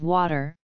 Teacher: the rounded vowel of water